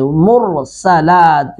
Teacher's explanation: سین پر سٹی کی آواز ہے